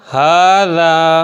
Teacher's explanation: اسی طرح آگے ہا کھڑا زبر ہا، رال الف زبر را، ہاذا، ہا کے اوپر کھڑا زبر ہے نا، تو اس کو بھی کھینچیں گے